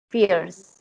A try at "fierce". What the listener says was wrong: One syllable. Not fierce, but fierce. Fierce. Fierce. Yeah, you don't want to get fierce in there. Fierce. You want to get just fierce. Think of it. Think of it spelled as FEARCE. Fierce.